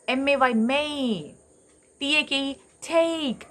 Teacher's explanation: ആയിൽ തുടങ്ങി എയിൽ തുടങ്ങി ഈയിൽ വന്ന് നിൽക്കും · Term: ഫസ്റ്റ് ഡിഫ്തോങ്